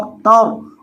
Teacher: अब यहाँ देखें, ता ज़बर रॉ, ता को रॉ के साथ मिलाएंगे क्योंकि रॉ साकिन है, ता ज़बर रॉ, तर, और रॉ को मोटा करके पढ़ेंगे क्योंकि रॉ साकिन से पहले जब ज़बर आता है तो रॉ को मोटा किया जाता है